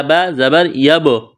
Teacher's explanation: با ساکن ہے، با پر قلقلہ کریں گے